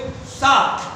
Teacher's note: इसका जब उच्चारण करते हैं तो हमारी जीभ हमारे दांतों से टकराती है